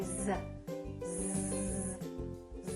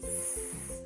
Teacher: You should feel that Z produces a vibration, so it's a voiced sound, whereas S does not produce the vibration